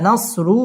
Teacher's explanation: র পুর হবে মোটা করে পড়তে হবে